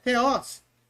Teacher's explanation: Theos é o epsilon, que é aberto.